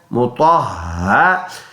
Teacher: ہا سینے سے ادا ہونے والا ہا کر کے ادا کریں گے